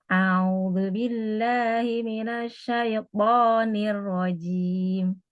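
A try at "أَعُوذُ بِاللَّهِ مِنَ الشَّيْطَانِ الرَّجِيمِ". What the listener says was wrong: Enggak. Itu ada bagian samping lidah yang ikut. Dia kayak huruf T, tempatnya di situ. To, to.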